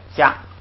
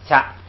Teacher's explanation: 加是不送气的，掐是送气的